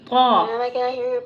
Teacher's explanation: طا pronounced from the tip of the tongue touching the roots of the top two front teeth.